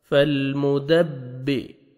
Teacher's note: با شد ہے تو سختی سے ملائیں گے دال کو با کے ساتھ